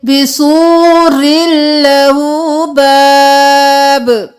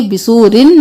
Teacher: رو کو لام کے ساتھ ملائیں گے، تنوین نہیں کریں گے، بسورن نہیں کریں گے.